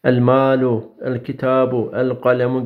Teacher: Evet, isarı kameriye ebgi hattaki ve khaf aqimahu cümlesinde toplanan 14 harften biri lam-ı tariften sonra gelirse izhar-ı kameri olur. Bu durumda lam-ı tarifin lamı kendisinden sonra gelen kameri harfe idgam edilmez. Açık bir şekilde okunur.